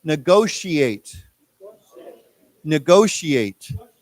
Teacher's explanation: remember the T has a sh sound to it okay it's not with a t sound